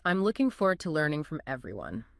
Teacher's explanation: the words I'm to and from are just grammatical glue. They get compressed. · The beat, the stress, lands on the key content words: looking, forward, learning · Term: stress-timed